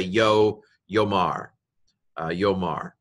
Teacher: the aleph is quiescent, which means it goes quiet